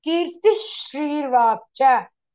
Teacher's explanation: The visarga changes to ish.